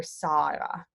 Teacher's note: G, when it's in a word or at the end of a word, is a nearly voiceless Y.